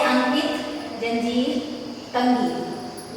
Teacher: जब इसका उच्चारण करते हैं तो इसकी ध्वनि नाक से निकलती है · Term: अनुस्वार